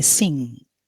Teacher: the nasal sound it's it is a velar because it is in the back of the mouth